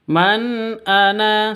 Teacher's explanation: nun mati bertemu dengan hamzah. Ini cara bacanya jelas terang. Man ana seperti itu karena bacaan izhar halqi ya.